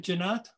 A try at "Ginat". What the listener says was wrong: With a hard G, like guitar.